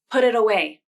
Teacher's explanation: The T in put and the T in it become the flap because both of the T's are between two vowels, and the second vowel is in an unstressed syllable.